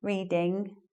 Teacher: You don't make an extra g or j sound at the end. So the standard way is to make the G sound, reading.